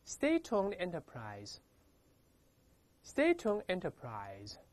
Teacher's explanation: 这个▁State-owned▁要连读变成▁State-owned▁连到一块